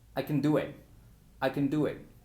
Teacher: Como si no hubiera nada entre el sonido K de la C y entre el sonido N de la N. Como si dijéramos KN. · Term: schwa